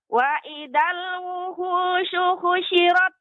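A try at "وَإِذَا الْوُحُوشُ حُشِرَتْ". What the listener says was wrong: Ya, hu di sini, Nek, bukan wuhu, ya, tapi pertengahan tenggorokan. Wuhu. Wuhu. Ya, adanya penyempitan tenggorokan. Wuhu, syuhusyirat. Wuhu. Ha, hi, hu. Hu. Wa idzal wuhusyu. Ya, nanti terus dilatih, Nek, ya, untuk agar lebih lembut lagi pengucapan ha, dia tidak ada hentakan seperti wuhu, wuhu.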